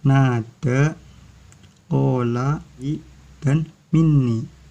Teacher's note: Mad tabi'i terjadi apabila huruf mad berupa wawu didahului dhamma, ya didahului dengan harokat kasroh, dan alif didahului fathah. Cara membacanya dengan panjang 2 harokat atau 1 alif.